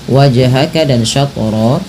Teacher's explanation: Pantulkan kedua-duanya karena ia bacaan qalqalah.